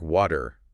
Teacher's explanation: in American English, that T often softens right up, doesn't it? Becomes almost like a quick D. The flap T.